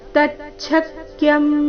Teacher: ತ ಮತ್ತೆ ಛ ಮೇಲೆ ಆಘಾತ